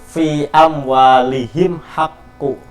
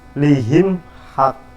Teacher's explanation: Bunyi mim disuarakan dengan terang dan jelas tanpa berdengung di bibir dengan mulut tertutup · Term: idhar safawi